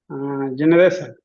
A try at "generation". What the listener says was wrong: It's generation, SH sound, not sun. It's not s sound, it's sh sound. Sh.